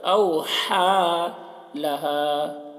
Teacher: ہا کو حلق سے ادا کریں گے